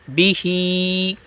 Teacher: ہا پہ بڑھائیں گے، با کو نہیں بڑھائیں گے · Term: کھڑا زیر